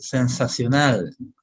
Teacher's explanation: lo mencionan como si la s fuera zeta